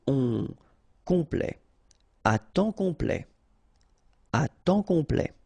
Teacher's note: Temps, and then complet, okay, here a T at the end will open it, the sound of the E, so E, okay, ple, complet, complet, and then OM is nasal here, just because you get your P after that, so it's on, complet, à temps complet, à temps complet.